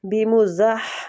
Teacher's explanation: بِمُزَحْ یہ والی ہا بھی وسط الحلق سے نکلتی ہے اور زا سیٹی والا سختی والا حروف ہے اس کو سختی کے ساتھ سیٹی کے ساتھ پڑھیں گے.